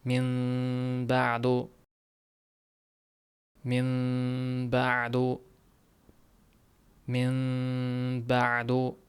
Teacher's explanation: Sukunli nun ba harfiga yo'l qo'yapti. Biz buni ya'ni nunni mimga almashtirib ikki harakat g'unna bilan o'qiyapmiz. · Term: inqilob qoidasi